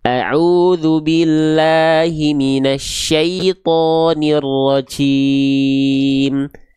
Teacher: Ada kayak Nah, itu adalah salah satu pelafalan huruf jim yang kurang tepat. Huruf jimnya ada keluar percikan-percikan nafasnya.